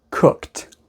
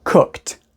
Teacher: we pronounce it like a t there's no e sound it's just a t sound so again this word is cooked because is an unvoiced sound